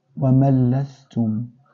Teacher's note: Now here we are inserting the noon into lam. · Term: al-idgham